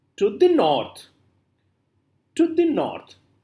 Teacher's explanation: first is unstressed then unstressed then stressed okay so first two syllables are unstressed the third one is stressed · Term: anapestic, anapaest